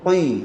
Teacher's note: huruf qaf ni dia memang tebal. Tapi kalau dia jadi baris bawah, dia jadi kurang tebal. Bila kurang tebal, kita kena buat senyum.